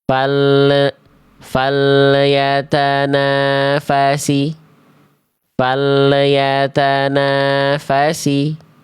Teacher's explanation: Kenapa salah? Karena lam sukunnya memantul.